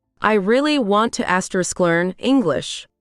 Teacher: Notice how to is almost gone.